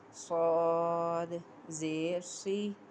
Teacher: اب اس میں سوئی نہیں کہنا, ہم نے سی پر پڑھنا ہے اور سیٹی کی آواز دینی ہے